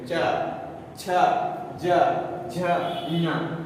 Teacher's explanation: जीव का भाग जो है कहाँ पे सटता है, तालु में सटता है